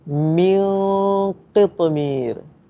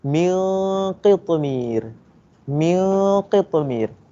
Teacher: Tapi nipisnya hanya untuk di huruf mim sahaja. Bila masuk dengung, dia kena tebal sebab nak masuk ke huruf qaf. Jadi bacaan ni ialah mil mi tu nipis. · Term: dengungnya kena tebal